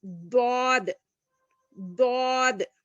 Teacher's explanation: زبان کی کروٹ جب بائیں طرف والی اوپر کی 5 داڑوں سے لگے تو دواد ادا ہوتا ہے. یہ زبان کا جو سائڈ والا حصہ ہے نا اس کو یہ داڑوں سے لگانا ہے ہم کو.